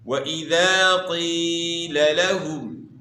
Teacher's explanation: قیل یا مدہ ہے، یا ساکن سے پہلے زیر ہے، تو آپ نے ایک الف کی مقدار کے برابر آپ نے کھینچنا ہے، اور یہاں جو ہے نا قیل لہم، دو لام اکٹھے آ گئے ہیں، تو آپ نے ان کو الگ الگ کر کے پڑھنا ہے، واضح کرنا ہے کہ دو حروف ہیں۔